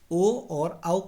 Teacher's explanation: ओ और औ का उच्चारण स्थान कंठ और उष्ट है